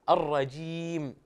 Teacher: انت كانك عملت الجيم ولم تحقق الكسره